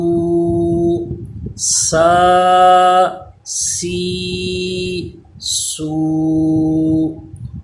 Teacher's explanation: سین پہ سیٹی پیدا تھی لیکن باریک تھا